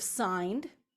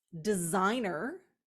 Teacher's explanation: so the S has shifted to a Z sound